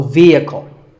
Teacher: It's often pronounced wrongly as vehicle, but the E is a long vowel and the H is silent, so vehicle.